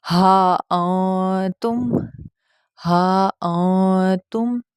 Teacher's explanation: نون کی آواز کو چھپایا جائے گا، اسی کو اخفا کہتے ہیں۔